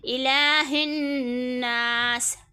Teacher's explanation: الہ الناسی کو ہم ناس کریں گے کیونکہ سین کو ہمیں وقف کرنا ہے، زیر کو ہمیں نہیں کھینچنا، کھڑی حرکات کو ہمیں کھینچنا ہے ایک انگلی کے برابر، ٹھیک ہے۔